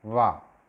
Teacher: ऐसे ही अगला है वकारस्य दंतोष्ठ, वा जो है वो दांत से और ओष्ठ से बोला जाता है। वा, नीचे वाला ओष्ठ, ऊपर वाला दांत, दोनों जब मिलते हैं तो वा की ध्वनि उत्पन्न होती है।